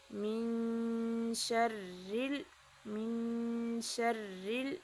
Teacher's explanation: مالک الناس، الہ الناس، من شر یہاں پہ را باریک پڑھیں گے